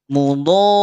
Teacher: Yo, panjangkan dulu 6 harokat, kemudian tekan pada huruf ro.